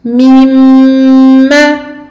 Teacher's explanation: Donc ici, runna akmal ma takun, runna très longue sur le mim qui porte la shadda